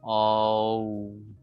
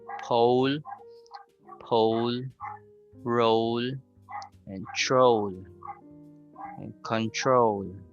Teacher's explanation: So there's the movement of the W sound. So we have to really move your lips from big opening to a small opening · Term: long O sound